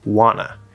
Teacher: this is one of those cases where both t's disappear